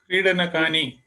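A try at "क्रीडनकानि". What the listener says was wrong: Kridanakani. Uttamam.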